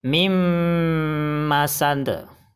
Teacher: bacanya harus dimasukkan ke huruf idgham bi gunnah dan disertai dengung 2 harokat